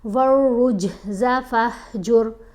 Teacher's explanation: را کو جب جیم سے ملائیں گے تو جیم کے اوپر کلکلا کریں گے، کیونکہ یہ حروف کلکلا میں شامل ہے نا۔